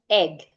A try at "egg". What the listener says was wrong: Can hear the H. Hold your breath. Make sure you're not breathing. So the strategy to pronouncing words that start with vowels and not adding the H sound is holding your breath. You have to practice that until you can pronounce it with your breath.